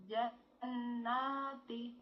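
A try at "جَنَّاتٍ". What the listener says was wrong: Paling tanwin ini. Jannatin. Ini tanwin. Kasrah tanwin. Double. Tin ya. Jannatin.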